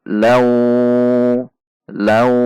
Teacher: harus dengung dan panjang 2 ketuk. Wa, 1 ketuk.